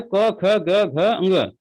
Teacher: कंठ से अ, आ और अह, क वर्ग तथा ह, इतने ही वर्ण उच्चारित होते हैं। क वर्ग का मतलब है क, ख, ग, घ, अंग, ये जो हैं, और ह, अ, आ और अह, इतने वर्ण कंठ से उच्चारित होते हैं।